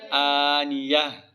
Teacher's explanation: اس کو وقف کی حالت میں ہا پڑھی جائے گی